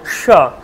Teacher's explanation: যেমন কী কী, যেমন স, তালুস্য, প্রথমে তালুস্য উচ্চারণ করো স, কোথায় উচ্চারণ করো মাড়ির ঠিক ওপরে স, তারপরে এটা উচ্চারণ করবেন কোথায় মূর্ধায় স, মানে জিহ্বাটা পুরো ভাঁজ করে উপরের দিকে উঠে